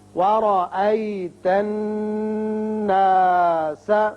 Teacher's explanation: ورا را کے اوپر زبر ہے، جب زبر ہو تو را پر پڑھتے ہیں